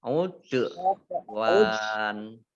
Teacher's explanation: Udwan dal sukun, ini termasuk huruf qalqalah ya, dibaca memantul.